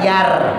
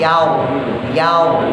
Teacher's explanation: cara bacanya tafkhim tebal, rada monyong. La yaw, bukan yar, bukan merenyes, bukan mesem, bukan yar, tapi yaw, yaw, monyong.